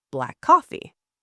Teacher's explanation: When a word ends and the next begins with the same sound, they merge into one longer sound. Black coffee, the 2 Ks merge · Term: same sound linking